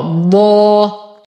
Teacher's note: أقف بمد عوض عن تنوين النصب حركتين مع تفخيم الضاد